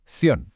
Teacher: Otro caso interesantísimo, conducción. Al final tenemos una I cerrada pegada a una O abierta. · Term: diptongo